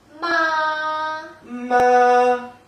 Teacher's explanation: Mom in Chinese is ma. Ma. So it's flat and loud.